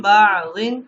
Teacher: نون ساکن کے بعد اگر یعنی کہ با آ گیا تو اس نون کو میم سے بدل دیں گے اور غنہ کر کے پڑھیں گے